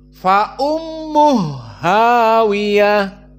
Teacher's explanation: dibaca dengan Idgham ha dijadikan ha yang dua berharakat menjadi satu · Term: idgham alkabir